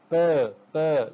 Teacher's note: in this bilabial sound, both of the lips come into contact with each other and form a very effective sort of constriction to produce bilabial sound